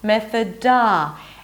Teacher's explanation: Both vowels here are not an O sound. One is a schwa, one is the as in father.